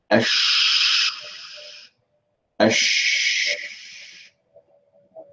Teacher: With the sheen, as you can straight away see, the sound is very much spreading out throughout the entire mouth.